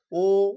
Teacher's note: ও উচ্চারণ করছি ঠোঁট গোল হয়ে যাচ্ছে কুঞ্চিত স্বরধ্বনি